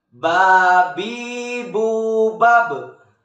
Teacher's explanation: Melafalkan huruf ba caranya dengan merapatkan kedua bibir kita tidak jauh dengan kita mengucapkan huruf B dalam huruf Latin.